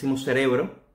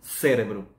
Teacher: temos o cérebro aqui a palavra é basicamente igual a espanhol A única diferença que a força de pronúncia se encontra Logo no início da palavra contrariamente ao espanhol